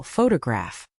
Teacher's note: the word photograph is stressed on the first syllable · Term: primary stress